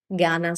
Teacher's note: I'm spending more time on the final I.